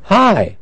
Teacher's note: the h we cannot reduce it because it's at the beginning